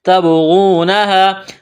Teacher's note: با ساکن ہے، با پر قلقلہ کریں گے